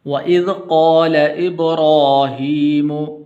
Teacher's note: ابراہیم ہا کے نیچے کھڑی زیر ہے تو اس لیے آپ اس کو بھی لمبا کرنا ہے